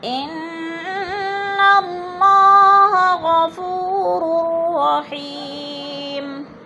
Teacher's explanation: را کو را سے ملا کر ادغام کریں گے